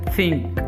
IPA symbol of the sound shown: θ